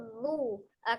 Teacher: Zal ujung lidahnya ada di ujung gigi seri bagian atas.